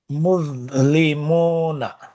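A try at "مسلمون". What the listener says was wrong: Perfect, এখন ঠিক আছে।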